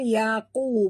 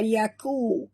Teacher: Yaqulu, qaf tebal, yaqu, bukan yaku.